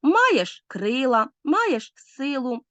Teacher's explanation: хорей наголошується перший склад